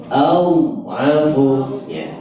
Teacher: Tapi afu itu mengalirnya lebih lama, namanya rakhawah, mengalir lebih lama.